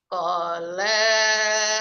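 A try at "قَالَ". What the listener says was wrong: Nah, la-nya kepanjangan Bu, hati-hati gak ada mad.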